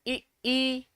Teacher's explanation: इससे हो गया हमारा ई, जब हम कहेंगे ना ई ई, हाँ बहुत बढ़िया, 9 का ए हो जाएगा । कहेंगे ए, ई कहेंगे ना तो हमारी आगे से आवाज आ रही ना, ई आगे से आ रही